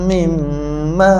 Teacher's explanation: mimma nipis dengan a tak nak bunyi o